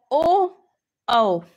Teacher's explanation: याच्यात कंठ पण आहे आणि ओठ पण आहे म्हणून हा झाला कंठोस्ट्य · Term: कंठोष्ठ